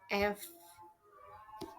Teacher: F ini yaitu dihasilkan dengan menempelkan bibir bawah ke gigi atas dan mengeluarkan udara tanpa menggetarkan pita suara. Jadi F ada keluar udara. · Nah, artinya konsonan F ini adalah bunyi konsonan yang dihasilkan dengan cara menghalangi atau menyempitkan aliran udara yang keluar dari paru-paru. Penghalang ini dilakukan dengan mempertemukan bibir bawah dan gigi atas. Selain itu, ketika mengucapkan bunyi F, pita suara tidak bergetar. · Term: labiodental